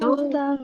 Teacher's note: Tutang dari makhorijul hurufnya ujung lidahnya diturunin sedikit, jangan ditempelin. Jadi n-nya nggak kedengeran. Jangan dibawa masuk ke dalam, nanti jadi eng.